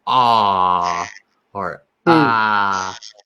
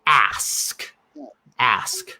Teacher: it's more open and more like nasally than than you think.